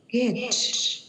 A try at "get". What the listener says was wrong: Chữ tờ chưa phát âm đúng. Get. Của chị là có xu hướng dính cái mặt này vào này, nên nó sẽ giống như là get. Nó phải là get.